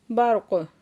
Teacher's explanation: काफ वक़फ़ की वजह से साकिन हो जाएगा तो फिर काफ साकिन पे कलकला हो रहा है